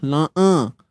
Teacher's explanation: Huruf ain ni sempitkan tengah kerongkong kita. Jangan bunyi hidung.